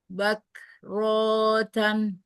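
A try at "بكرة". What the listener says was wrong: Bukrotan. Bukrotan. Kebanyakan itu renggangnya. Dikit aja. Bukrotan. Bukrotan.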